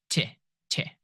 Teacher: t is made by placing your tongue behind your teeth